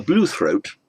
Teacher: the stress on the first syllable, so it's not a blue throat, a throat that is blue, but a bluethroat is a bird whose throat is blue.